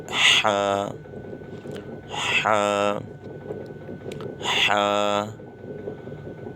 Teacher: حا حا حلق کے بیچ میں سے، یہ حروف حلقی ہے